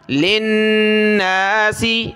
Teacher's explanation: لام کو نون کے ساتھ ملایا، یہاں شد ہے غنہ ہوگا